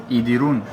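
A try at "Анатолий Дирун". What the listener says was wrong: No, Idirun. Anatoly Dirun. Dirun. Anatoly Dirun, without E.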